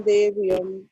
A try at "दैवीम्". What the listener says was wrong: सिर्फ देवीम नहीं बोलिए, दैवीम बोलिए. दैवीम. देवीम नहीं, दैवीम.